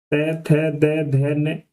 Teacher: के उच्चारण करते समय जीभ ऊपर के दांतों को छूती है, उन्हें हम वह दंत्य या दंत कहलाते हैं।